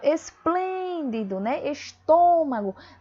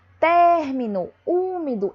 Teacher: percebam que eu fecho mais o som, né? No caso aqui, ó, término, úmido, eu abro mais o som